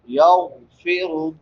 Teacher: یغفر، غین حروف مستعلیہ میں سے ہے، اس کو پر پڑھیں گے. را کے اوپر پیش ہے، یہ بھی پر پڑھی جائے گی.